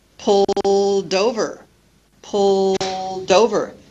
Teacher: linking the final consonant to the vowel sound of the next word · You hear the D become part of the next word. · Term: linking of cc+ V